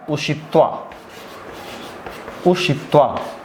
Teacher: उकारांत है, इसलिए जो दंत स है वो मूर्धन्य स में बदल गया